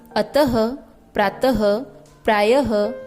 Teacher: विसर्ग चिन्ह का उच्चारण हल्के ह की तरह किया जाता है